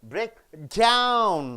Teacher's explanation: So you have to stress on the down.